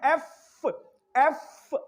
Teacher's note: एफ आपका सांस रुक गया, एफ और जुबान और जो होंठ नीचे वाला है वो ऊपर वाले दांतों के साथ टच हो रहा है, एफ, तो लिहाजा जो एफ है वो आपका क्या हो गया, कॉन्सोनेंट हो गया, क्योंकि वो इस कंडीशन पे पूरा नहीं उतरा।